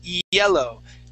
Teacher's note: the Y sound starts off with an E